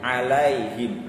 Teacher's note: Selanjutnya yang ke-13 ya, lai ya, jangan lai, alaihim, alai ini imalah ya, ini harus jelas i-nya, jangan sampai imalah miring ke e ya